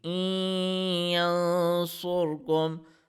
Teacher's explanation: we are mixing up the sound of Hamza, Kasra, Noon, and Ya, and we are reading it in our nose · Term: Idgham